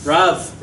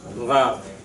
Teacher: Remember that the R is guttural. The R, the resh, is guttural, which means what? Comes from the back of the throat.